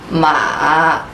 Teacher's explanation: If you want to pronounce the third tone correctly, you know, drop your voice low and stay low, don't bring it up. Actually, it sounds cracky.